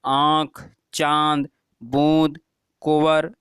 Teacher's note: अनुनासिक, यहाँ पर क्या है, चंद्रबिंदु है। अनुनासिक के उच्चारण में वायु मुख तथा नाक दोनों से निकलती है, जैसे आँख, चांद, बूंद, कुंवर आदि।